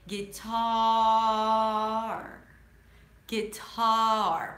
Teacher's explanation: Once you start hearing the R sound, once your tongue starts going up lightly, that's it. The word is over. So, make sure you you stretch out the vowel before the R.